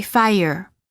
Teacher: quality of the vowel often changes when the r follows it there is a slight uh sound that is added after certain vowels making it sound almost as if the word contains an extra syllable